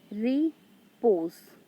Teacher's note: So here re is unstressed and pose is stressed. So here is iambic pattern.